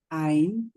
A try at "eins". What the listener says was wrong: আইন্স, এস আছে কিন্তু লাস্টে। আইন্স,